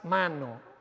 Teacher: con la realización de las vocales si yo digo la palabra la a es nasal porque está rodeada por dos nasales · Entonces, pero aunque no hables con nasalización de las vocales, si yo digo la palabra mano, la A es nasal, porque está rodeada por dos nasales, mano. Es inevitable para mí que se produzca un fenómeno de asimilación y la A se nasalice, ¿vale?